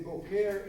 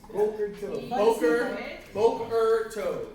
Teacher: when you say boker, you put the accent on the first syllable